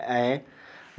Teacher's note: ऐ अर्ध विवृत स्वर के अंतर्गत आता है।